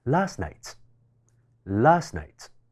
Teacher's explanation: ▁中間▁t▁呢一個輔音係可以被省略嘅，讀起上嚟就會更加自然流暢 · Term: 省音